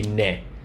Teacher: Sometimes in a nasal ambient, a nasal, environment, the D will start to happen, whereas when it's an oral environment without nasality, you won't have the D, it'll just be ne.